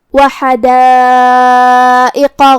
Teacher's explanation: وَزَيْتُونًا وَنَخْلًا وَحَدَائِقَ غُلْبًا، کلمت حدائق میں یہاں حرف الحا کو ہم حلق کے درمیان والے حصے سے ادا کریں گے، یہاں مد ہے، یہ مد واجب متصل ہے، تو ہم اپنی آواز 4 مد کے برابر لمبی کریں گے۔ آخری میں حرف القاف کو بھاری آواز میں پڑھنا ہے کیونکہ قاف حروف التفخیم میں سے ہے